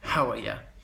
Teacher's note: putting the emphasis on a different syllable on the last one and ramming it all together